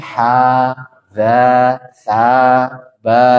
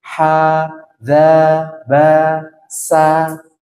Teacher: ah berarti dia dia namanya secara secara istilah namanya istifal e suara yang mendatar dikarenakan tidak terangkatnya pangkal lidah dia dia lempeng kayak gini dia tidak terangkat ke sini nah